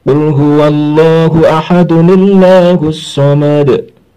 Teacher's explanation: Suara en dari tanwin ini berubah menjadi nun yang dikasroh. Dan lam jalalahnya karena dia bertepatan setelah kasroh, maka dibaca tarkik, dibaca la